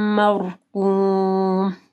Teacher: مرقوم قاف کو جو ہے موٹا پڑھنا ہے